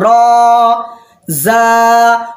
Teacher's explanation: ये रॉ और ये जा, ये एक एक अलिफ के बराबर आपको खींचना है